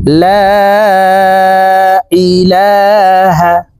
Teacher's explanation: লা এখানে তিন আলিফ টান হবে । মদের হারফের উপরে চিকন চিহ্ন বামে হামজা মধ্যে মুফাসিল তিন